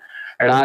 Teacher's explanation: ण का उच्चारण स्थान क्या होता है? मूर्धा होता है। और ये सघोष होता है और अल्पप्राण होता है।